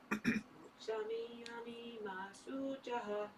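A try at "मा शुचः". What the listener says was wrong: Yeah, it's not ma shuchaha. There's not a long u. Yeah, you don't hold the u for longer. It's just a short vowel. Moksha yashyami ma shuchaha. Shuchaha.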